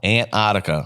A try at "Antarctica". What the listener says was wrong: Yeah, he's adding an extra T. Antarctica. Antarctica.